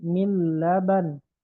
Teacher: berarti dia idgham kamil karena lamnya ada tasydidnya.